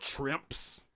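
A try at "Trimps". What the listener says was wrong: why are you pronouncing it like that because i feel like you're saying with an sh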